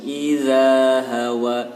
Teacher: Huruf da dengan huruf za beda. Kalau huruf za itu lidahnya dikeluarkan sedikit